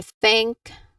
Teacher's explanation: That's a voiceless th sound.